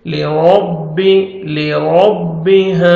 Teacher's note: جب زیر آتا ہے را کو باریک کر کے پڑھیں گے، را کو زبر ہے را کو موٹا کر کے پڑھیں گے